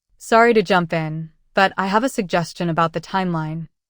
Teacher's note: Listen closely to how your voice goes up at the end of Sorry to jump in. · Notice the rising tone at the end. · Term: rising intonation